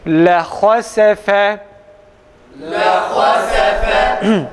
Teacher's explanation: Biz lehasefe dediğimiz zaman kalın ile inceleri aynı şekilde okumuş oluruz. Öyleyse ha harfini a sesiyle, sin ile fa'yı ise e sesiyle okuyoruz.